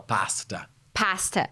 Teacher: a gente fala pasta pasta parece mais o a brasileiro